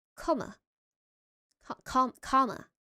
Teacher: the last vowel in comma, which is much more open and further forward in the mouth than the equivalent in RP,